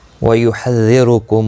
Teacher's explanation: وَيُحَذِّرُ را پیش کی وجہ سے پر پڑا جائے گا